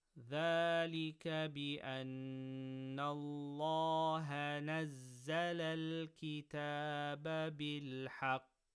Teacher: Lam of Allah after fatha, full mouth